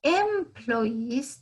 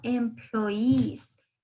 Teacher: El acento o el sonido o la fuerza la damos en la parte final · como teníamos doble E, el sonido va a ser de una I alargada, ¿sí? Y el acento va a estar en la parte final.